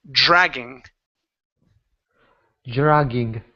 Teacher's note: it's dr with a J sound at the beginning